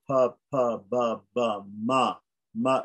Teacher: is a labial on the lips nasal